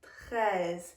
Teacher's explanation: Again in the back of the throat, the r